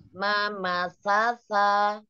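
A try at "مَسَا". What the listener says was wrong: Tanya agak kurang lepas yuk. Mama sasa lepas. Lagi kurang lepas. Lepasnya jadi enggak ke dalam suaranya, enggak tertahan di dalam. Dorong, dorong yuk.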